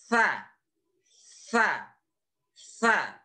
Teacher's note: Sa berada pada ujung lidah dan ujung gigi seri yang atas. Jadi sedikit keluar. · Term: huruf sa